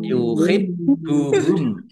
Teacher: Bnya dibaca dobel, ada tasdidnya ditekan biar tampak dobelnya